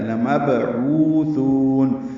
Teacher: با ساکن پہ قلقلہ ہے، لمبعوثون، عوثو دونوں واو مدہ ہیں، دو دو حرکات لمبے کریں گے۔